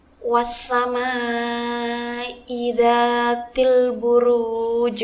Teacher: huruf Jim yang berada di akhir kata dibaca sukun dengan pantulan yang kuat karena termasuk qolqolah kubro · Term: qalqalah kubra